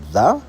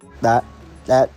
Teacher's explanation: when you say the th sound at the beginning of the you can feel your vocal cords vibrate